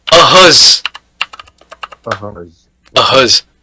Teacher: That Z sound is because S is in between two vowels